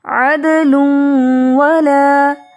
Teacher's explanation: لام کے اوپر پیش تنوین، آگے واو یرملون میں سے غنہ کے ساتھ ادغام ہوگا